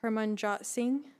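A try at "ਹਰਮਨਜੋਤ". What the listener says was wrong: Like the O is elongated. Harmanjot.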